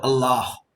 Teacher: Allah Al is from the throat it is like a w when you pronounce this La the tongue is touching the teeth and when you pronounce the last a that is breath coming